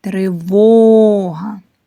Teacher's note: Наголошений другий склад.